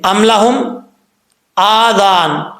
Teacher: ذال بغیر سیٹی کے پڑھا جاتا ہے، اس کا مخرج زبان کا سرا اوپر والے دانتوں کے کنارے سے